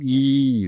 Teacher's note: ஈ என்ற எழுத்து இதழை விரிப்பதால் பிறக்கும் ஈதல்களை நம்முடைய இதழ்களை விரிக்கவேண்டும் அதேன் சட்ட அகலமாக விரித்தால் ஈ நிழல் இது